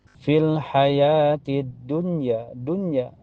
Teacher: Karena alif lam ketemu huruf syamsiyah yaitu dal. Ya, cara bacanya langsung masuk ke dal. Alif lamnya tidak terbaca. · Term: alif lam asyamsiyah